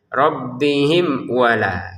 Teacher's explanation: di sini mim sukun bertemu wau dibaca dengan jelas ya